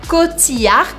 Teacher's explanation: Aqui a gente não fala o L de Cotillard. Então a gente fala Cotillard, como se a gente fizesse desaparecer o L e fizesse só ficar o I